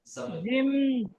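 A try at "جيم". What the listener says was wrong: জিম বলে আওয়াজটা চেপে দিলে ভুল পড়া হবে, ওটা পড়তে হবে জি।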